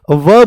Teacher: जैसे ही मेरे प्यारे व बोलोगे तो व में क्या होता है, ऊ की ध्वनि आती है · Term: अर्धस्वर